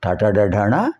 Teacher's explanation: నాలుక చివరి భాగం ఈ అంగిటి పైభాగంలో స్పృశించడం వల్ల వస్తున్నాయి కనుక మూర్ధ అంటే పైభాగం, మూర్ధన్యములు.